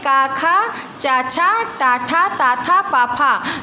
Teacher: जिन ध्वनियों के उच्चारण में ध्वन तंत्रिका में कंपन अथवा गूंज उत्पन्न नहीं होती उसे हम आघोष कहते हैं।